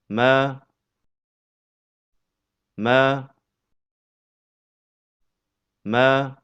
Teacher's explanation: Huruf mim keluar dari pertemuan antara bibir bawah dengan bibir atas.